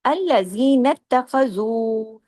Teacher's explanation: اب زو کو ہم نے 2 حرکات کھینچا کیونکہ اس کے ساتھ واو مدہ ہے۔